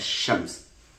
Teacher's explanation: The L sound in a shems, the L sound is a coronal sound, and sh is also a coronal sound. So what happens is that the L gets swallowed by sh, so that we have a geminate sh, what looks like a geminate sh. Geminate means tad'if, when we double the consonant as shams.